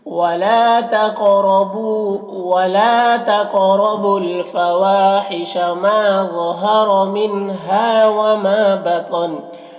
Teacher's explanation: बतन में तो को पुर पढ़ेंगे, ये हुरूफ़ मुस्तअलिया में से है, इस तरह से।